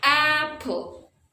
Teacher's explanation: the stress syllable is the first syllable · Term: stressed syllable